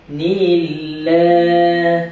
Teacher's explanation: Kat sini pula jumpa dengan apa? Dengan lafzul jalalah yang mana dibaca dengan nipis.